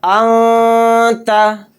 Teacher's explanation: تو نون کی آواز کو ناک میں چھپا کر پڑھنا چاہیے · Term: اخفا